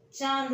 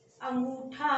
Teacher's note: अनुनासिक में पूरी की पूरी वायु हमारे नाक से ही निकलती है